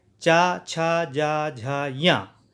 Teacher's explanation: चा, छा, जा, झा, या, ये तालु से बोले जाते हैं। तालु यानी जो जीभ है वो तालु पर लगती है, इसीलिए इनको तालव्य जो है अक्षर कहे जाते हैं